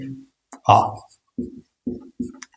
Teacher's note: इसमें मुंह है वो सबसे ज्यादा खुलेगा जीभ है वो लगभग स्थिर से रहेगी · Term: विवृत स्वर